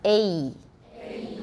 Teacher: learn to produce only the first part of the vowel, A, as in hey.